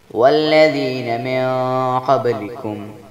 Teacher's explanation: نون ساکن کے بعد قاف آ گیا ہے جس لیے یہاں پر اخفاء حقیقی کا غنہ کیا جائے گا، اور با ساکن ہے جس لیے با پر کلکلہ ہوگا۔